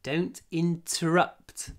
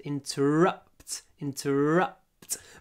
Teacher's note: don't interrupt the stress is at the end interrupt interrupt but the uh is very short before the unvoiced